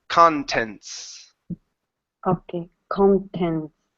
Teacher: The T is not muted. It's connected to the S.